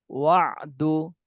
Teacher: আইনে জজম থাকলে আইনটা উচ্চারণ করার সময় মনে হবে যে গলার মধ্যে আটকে যাচ্ছে